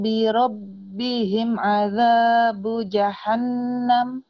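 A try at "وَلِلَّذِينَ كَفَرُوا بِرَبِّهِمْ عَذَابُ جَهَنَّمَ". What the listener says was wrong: Tuh, bi rabbihim, jangan buru-buru tuh ya. Bukan, maksudnya birobihim. Bi rabbihim betul. Jadi ibu himnya tuh keburu-buru, misalnya gini. Nggak usah artikulasinya harus jelas.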